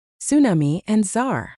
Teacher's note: If you try to say that T and the S right next to each other at the very start of a word, it feels like your tongue is doing gymnastics. Most of us in the US just give up on the T entirely.